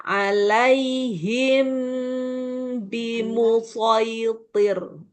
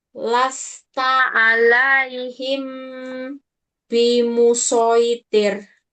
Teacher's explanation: mim sukun ketemu ba ada dengung